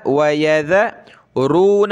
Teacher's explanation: ذال پہ زبان نکالیں، را کو موٹا کریں۔ وَيَذَ، ذال زبر ذ، وَيَذَرُونَ، را واو پیش رو، نون زبر نہ، رون۔